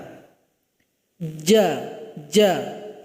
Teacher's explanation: Yaitu dari tengah lidah. Tempelkan ke langit-langit kita. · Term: huruf jim